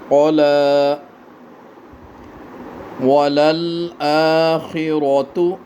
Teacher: را کو پر پڑھیں، را کے اوپر زبر ہے